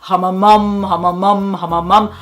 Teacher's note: the sound is now in front of my mouth, and it's very resonant and round, and it sounds deep, and I sound relaxed.